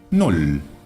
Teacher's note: la doble L, aunque tampoco es demasiado característica en el alemán, se pronuncia como una sola L